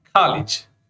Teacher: so rounded sound becomes unrounded